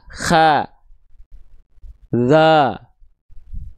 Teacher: Kalau pangkal lidahnya turun huruf-huruf tebal enggak akan terdengar O. Tapi vokalnya vokal A. Kha dza. Cuma medanya dia enggak tipis.